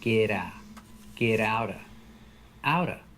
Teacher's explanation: The T in out changes to a fast D because it's between vowels.